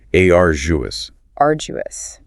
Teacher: Stress on the first syllable, and that sound is quite soft, like a J.